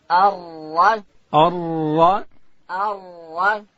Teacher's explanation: او ډکه بیا وایو. را ادا کیږي د ژبې کناره به لوړې ورې ته ورولو